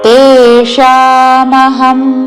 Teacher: రెండు దీర్ఘములు మూర్ధన్య షా